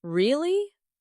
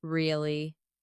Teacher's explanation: Really? Rising tone, curiosity. Really? Falling tone, confirmation.